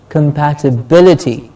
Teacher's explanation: For example, compatibility. Bill gets a stress.